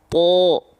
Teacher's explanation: Jadi kalau huruf tebal dan dia berharokat fathah bunyi vokalnya bukan A lagi, tapi bunyi vokalnya menjadi O.